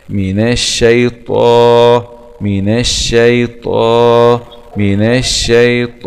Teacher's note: ألف سكون مد طبيعي، ألف سكون مد طبيعي، ألف سكون مد طبيعي، مع تفخيم المد بالألف لأنه جاء بعد حرف من حروف الاستعلاء